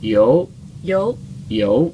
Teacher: you kind of go down a little bit and then you go up